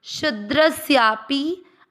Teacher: परिचर्यात्मकम कर्म। चौथा चरण शु मात्रा बड़ी, थोड़ा सा उसको आप रस्व जो अक्षर होते हैं उससे अधिक समय देंगे